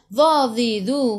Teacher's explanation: hujung lidah keluar sikit sahaja pada gigi depan